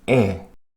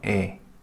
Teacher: 입을 크게 벌려서 에. 입을 작게 벌려서 에.